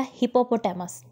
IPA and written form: ˌhɪpəˈpɒtəməs (hippopotamus)